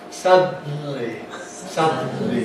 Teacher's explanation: The tongue tip doesn't move throughout the whole DNL sequence. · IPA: [ˈsʌdn̩li]